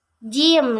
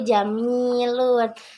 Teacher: jim ini dihasilkan di langit-langit keras dan contohnya yaitu jamilun.